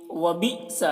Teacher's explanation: حمزہ ساکنہ ہے، جھٹکا لگے گا۔